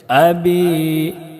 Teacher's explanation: با میں یا مدہ ہے، اس کو 1 الف کے برابر کھینچ کر پڑھیں گے